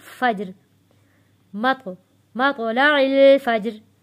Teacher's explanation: جیم بھی حروف قلقلہ ہے اس کی آواز واپس پلٹ کر آئے گی